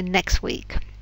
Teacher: the t disappears because it's too hard to say all those different consonants together so it's easier to say next week did she answer you